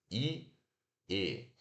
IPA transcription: e